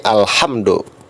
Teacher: lamnya jelas, dibacanya jelas, maka itu termasuk alif lam qamariyah